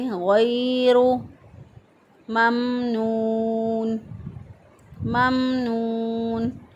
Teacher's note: را کے پر پیش ہے، اس را کو بھی موٹا پڑھیں گے، پور پڑھیں گے